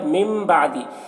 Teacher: تو نون کو میم سے بدل کر پڑھیں گے، اسے اقلاب کہتے ہیں، اور اسے غنہ کے ساتھ میں پڑھا جاتا ہے ، غنہ اخفا کے ساتھ میں پڑھا جاتا ہے۔ وصیتین، تین